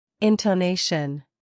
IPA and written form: ˌɪntəˈneɪʃən (intonation)